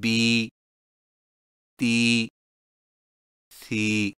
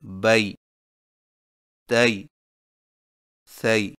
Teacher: یائے مدہ میں ہونٹوں کو نیچے کی طرف کھول کر تھوڑا سا کھینچ کر پڑھیں، مثلا بی، تی، سی۔ اور یائے لین میں ہونٹوں کو اوپر کی طرف کھولنے کے فوراً بعد نیچے کی طرف جھکا کر نرمی سے بغیر کھینچے پڑھیں